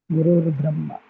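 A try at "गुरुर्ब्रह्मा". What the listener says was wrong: is Gurur Brahma, Gurur Vishnu. That's why many people when they chant, they say Guru Brahma, Guru. That's wrong actually. Gurur Brahma, Gurur Vishnu. Not Guru Brahma, Guru Vishnu. Guruhu Brahma, Guruhu Vishnu. You can do like that if it is a compound, possible. The compound it is possible. Guruhu Eva Brahma, Guru Brahma.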